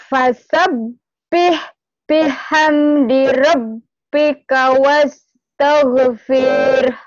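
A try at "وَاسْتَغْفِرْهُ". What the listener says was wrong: Enggak panjang, panjang itu. Jangan lagi, fir. Coba fir-nya aja nih. Fir. Fir digabung ro sama.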